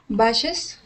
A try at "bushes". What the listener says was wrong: Bushes. Good. Bushes. Good.